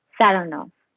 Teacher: He pronounces the name with the stress on the second syllable